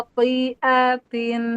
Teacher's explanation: Kho dia naik pangkal lidah ya. Isti'la. Khotiatin.